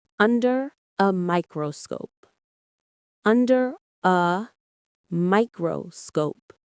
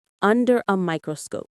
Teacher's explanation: The main stress is on microscope.